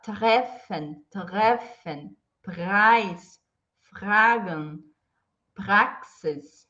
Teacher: Então, depois de consoantes, é o R, uvular, tá?